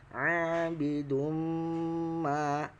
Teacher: tanwin bertemu dengan huruf mim atau ma maka harus didengungkan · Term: idgham